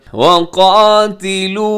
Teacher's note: काफ मोटा, अलिफ भी मोटा है, और वक़ाते नहीं कहना, ताज़िर ती होता है, ताज़िर ते नहीं है।